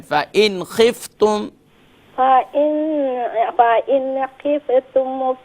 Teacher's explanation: Don't do क़लक़ला on the फ़ा, और नून पर भी कंट्रोल करें।